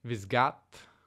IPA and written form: vɪsˈɡaːd (biscuit)